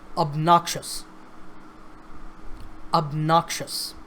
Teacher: this word has 3 syllables, obnoxious, and the stress is on the second syllable